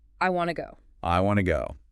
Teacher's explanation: The native speaker compresses those function words, want and to, into a single, quick sound, wanna. The stress then falls naturally on the key pieces of meaning, the desire, which is I, and the action, which is go.